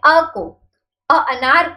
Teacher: मूल स्वर का उच्चारण जीभ के मध्य भाग से होता है